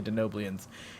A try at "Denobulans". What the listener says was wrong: There's no I. What are you doing?